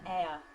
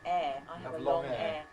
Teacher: I don’t have the ɛə diphthong. I have ɛː. I have a long ɛː.